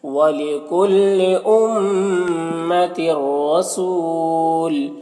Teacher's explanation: یہاں پر تنوین کے بعد را ہے حروف یربلون میں سے تو تنوین کو را سے ملا کر بغیر غنہ کے پڑھیں گے، اس کو ادغام تام کہتے ہیں. اور یہاں پر را مشدد کو پر زبر ہے تو را کو پر پڑھیں گے اور یہاں پر واو مدہ ہے اور یہاں پر وقف کریں گے تو سکون سے بدل جائے گا یہ تنوین، تو پھر یہاں پر مد عارض وقفی ہوگا تو اس طرح سے پڑھیں گے.